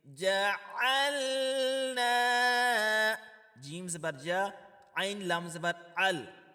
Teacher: جعلنا، اس کو جعلنا نہیں پڑھنا، جعلنا یہ غلط ہو جائے گا. عین کی جگہ حمزہ کی آواز نہیں نکالنی، بلکہ عین کی جگہ عین کا ہی مخارج ہونا چاہیے.